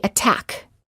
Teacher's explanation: the t does not change to a fast d sound if the t is within a stressed syllable